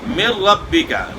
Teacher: من ربک، نون ساکن کے بعد را ہے یہاں، تو نون ساکن کو را میں ملا دیا ہے، مدغم کر دیا ہے، لیکن نون کی آواز مکمل طور پہ ختم ہو گئی ہے۔ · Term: بلا غنہ